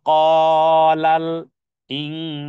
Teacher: নুন সাকিনের পরে সিন এসেছে, ইনসান, এখানে ইং একফা গুন্না